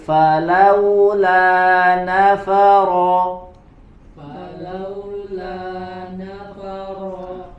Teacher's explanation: di situ ada beberapa huruf lam berharakat fathah maka hati-hati membacanya tidak dibaca dengan tebal harus dibaca dengan tipis tidak Gema ya tidak bergema suaranya falaa nafaro falaula nafaro wahuwal